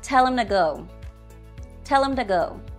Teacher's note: the grammatical words him and two are unstressed and have a weak form when pronounced inside a sentence